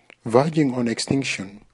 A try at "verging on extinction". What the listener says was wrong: Verging. Pronounce that V with a little more vibration.